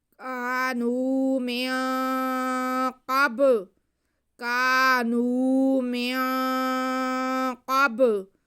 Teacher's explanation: ہم نون کی آواز کو ناک میں چھپا کے پڑھتے ہوئے قاف ادا کریں گے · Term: اخفا